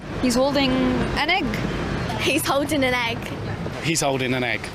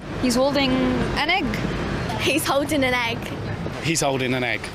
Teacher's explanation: when we pronounce them there's no gap in between them it almost sounds like one word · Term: catenation